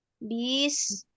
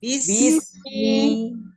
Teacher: pada kata bismi, di situ huruf ba-nya jangan dipanjangin.